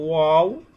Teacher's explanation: দুই ঠোঁট হইতে ও বা মিম অর্থাৎ যখন ঠোঁটটা গোল হবে ঠোঁটটা গোল করে উচ্চারিত হবে ওয়াও বা অর্থাৎ ঠোঁটের যে ভিজা অংশ সেই সেই দুই ঠোঁটের ভিজে